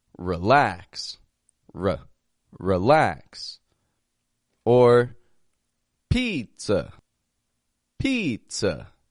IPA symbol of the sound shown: ə